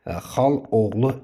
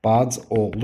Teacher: Yəni birinci sait tələffüz zamanı düşmüş olacaq. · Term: səs düşümü